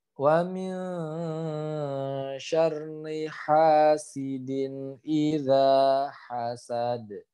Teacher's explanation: huruf dal yang sukun karena waqaf dia harus dipantulkan